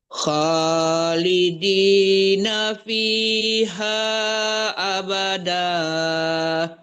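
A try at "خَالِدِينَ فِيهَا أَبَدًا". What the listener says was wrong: Panjang banget tuh Bu, abada. Itu sampai 4 harkat itu Bu ya. Khalidina fiha abada. Hanya boleh 4, tapi kalau danya cuma 2 harkat, 2 ketokan aja.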